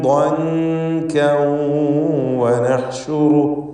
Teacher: ളൻകൻ എന്നതിലെ കാഫിൻ്റെ തൻവീനിനെ ശേഷമുള്ള വാവിൽ ലയിപ്പിച്ച് മണിക്കണം. ഇദ്ഗാം ബിഗുന്ന നാഖിസ് നൽകി മണിച്ചുകൊണ്ട് ഉച്ചരിക്കുക.